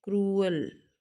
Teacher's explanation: ये ऊ अ मिला के एक ही बना रहा है साउंड